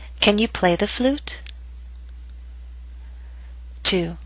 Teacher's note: remember that your voice must continue to rise until the very end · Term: rising intonation